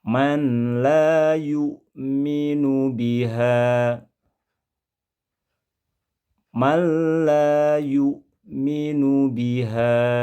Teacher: Pengucapan nun mati pada kata man yang berubah menjadi malla, ini hukum bacaannya disebut idgham bila gunnah